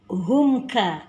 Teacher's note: kaf, ka itu bacaan huruf tipis, jadi ka huruf hams